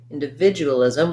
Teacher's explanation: we have the stress on the vid syllable